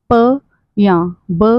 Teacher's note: प या ब का साउंड बोलते समय लिप्स को बंद करके खोलना पड़ता है, तभी ये साउंड पैदा होते हैं।